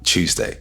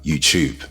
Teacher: the T at the beginning of a word can sometimes be pronounced with a ch sound